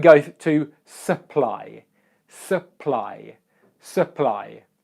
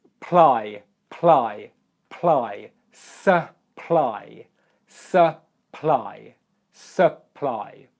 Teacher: the vowel sound that comes before the second syllable is the schwa sound